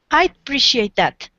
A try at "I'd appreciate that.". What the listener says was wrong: And try to pronounce the D on this one. I'd appreciate that. So it's I'd. Yeah, just say I would. It's easier. It's probably better to just say both words.